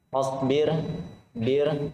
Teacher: ro tipis karena ro sukun diawali oleh kasroh.